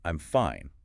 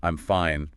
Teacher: The difference between saying, I'm fine, with a falling tone. Meaning, I am okay. Certain. Right. Versus, I'm fine, with a rising tone.